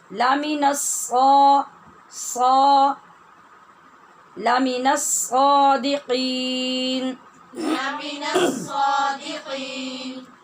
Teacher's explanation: صا کے لیے ہونٹ گول نہیں کیجیے